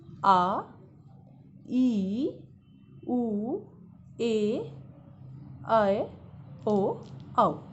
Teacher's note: ये हमारे हैं दीर्घ स्वर। इनमें दो मात्राओं का समय लगता है।